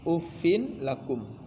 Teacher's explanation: এনে গুন্না হওয়ার কথা ছিল কিন্তু গুন্না হবে না এখানে ডাইরেক্ট ফিন হইছে